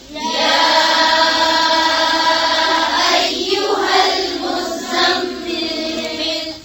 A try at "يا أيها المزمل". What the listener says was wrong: मीम पे क्या हो रहा है? गुन्ना करें गुन्ना.